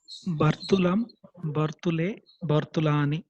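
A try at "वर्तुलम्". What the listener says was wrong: It is Vartulam, not Bartulam. Va.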